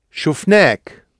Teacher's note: So the vowel's actually got a bit longer because we've hit the end.